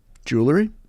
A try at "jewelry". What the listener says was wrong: Jewelry. Oh, because it sounds like you're saying Julery.